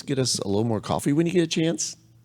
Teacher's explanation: So it's friendly, it's nice, it's kind of sing-songy. You notice the rising tone on the back end, right? Sing-songy.